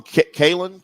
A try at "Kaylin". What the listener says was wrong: Kaylin. No. No T.